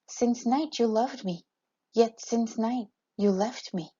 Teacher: a verse that ends with an unstressed extra syllable the result is that the rhythm of the verse is thrown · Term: feminine ending